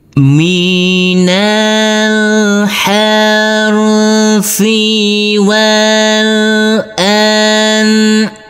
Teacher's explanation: minal harfi wal anami jangan lupa untuk tanwinnya kita rubah menjadi fathah dan kita baca panjang dengan panjang dua harakat